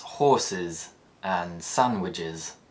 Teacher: When the es suffix follows a sibilant sound, it produces the is sound combination. Sibilants are high-pitched hissing sounds that include s, z, sh, zh, ch, and j.